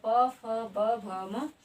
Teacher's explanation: ये औष्ठ के स्पर्श से उच्चारित होते हैं